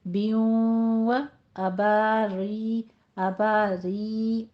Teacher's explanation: हम वाव का साउंड देंगे गुन्ना करते हुए। बियों अबारी, अबारी, रा बारीक हो जाएगी। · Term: इदगाम माअल गुन्ना